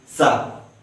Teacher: हमारा जीभ दांत को स्पर्श करते हैं, छूता है